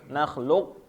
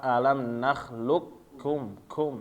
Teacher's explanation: qafnya hilang ya, langsung masuk ke huruf kaf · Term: idgham kamil